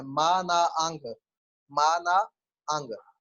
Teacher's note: नोज की vibration. मा, आप जब माँ बोलते हैं या ना बोलते हैं तो नाक वाइब्रेट करता है। आप उनको बताएंगे कि नाक पे हाथ रख के वाइब्रेशन को फील करें। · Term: नेजल साउंड